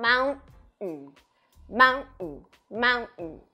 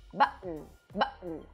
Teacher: Você vai fazer o but, segurar a língua ali na posição do t, mas não vai explodir esse t. Button. E faz a obstrução aqui na glote. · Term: glottal stop